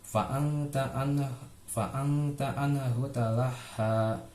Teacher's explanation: Fa'angta itu masuk ke hukum bacaan ikhfa, jadi dibaca dengan samar di fa'angta karena sukun bertemu dengan huruf ta